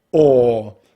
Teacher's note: to make this long vowel sound, what we need to do is we need to round the lips, bring the tongue up and back into the mouth, and the most important part we need to really drop the jaw quite a bit, like so: 'or'.